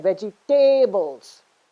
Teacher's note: vegetables no when you say vegetables you're stressing again veggie tables you're stressing on the third syllable